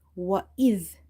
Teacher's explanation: Dhal is from the tip of the tongue.